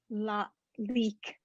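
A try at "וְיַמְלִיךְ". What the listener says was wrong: Leak. Not k. You got to get that ch. The yam leak. It's not a k. It's a ch. It comes from the back of your throat. It's a ch.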